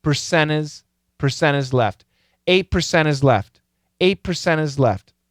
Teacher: So, percent, the N kills the T.